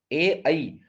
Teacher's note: एकार और ऐकार का उच्चारण स्थान कंठ तालु।